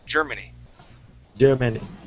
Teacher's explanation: we're gonna say germany with the accent at the beginning